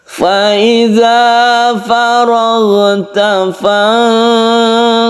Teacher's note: Sukun nun bertemu dengan shad, ini ikhfa, kemudian kita kolkolahkan dan pendek ya, soalnya ini pendek, langsung sukun ba dipantulkan.